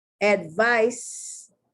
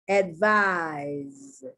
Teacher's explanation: The C is being pronounced like an S, and the S is being pronounced like a Z.